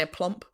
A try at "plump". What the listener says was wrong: No, you didn't say it. You didn't say the P at the end.